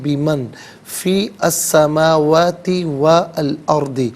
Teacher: نون ساکن کو اخفاء کے ساتھ پڑھیں گے، ناک میں آواز لے جا کر گنگنانا اسے اخفاء کہتے ہیں۔